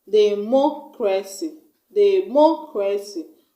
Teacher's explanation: we're going to stress on the third syllable from the end of the word. And the third syllable from the end of the word is on the mo.